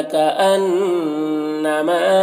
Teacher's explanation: نون مشدد غنہ ہوگا، ما میں الف مدہ ہے، ایک الف کے برابر کھینچیں گے.